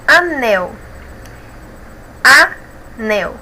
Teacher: Nel é a sílaba mais forte, então é oxítona porque é a última.